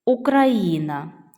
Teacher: тут ми бачимо 4 склади наголос падає на третій склад